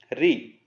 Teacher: एकमात्र ऐसा स्वर है जो मूर्धा से बोला जाता है। दांत और जीभ, ये जो तालु होता है उसके बीच की स्थिति को हम मूर्धा कहते हैं।